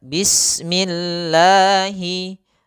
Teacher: Dalam Basmalah, mohon perhatikan huruf 'seen'. Cobalah untuk tidak membiarkan bunyinya memantul atau bergema saat mengucapkan huruf 'seen'.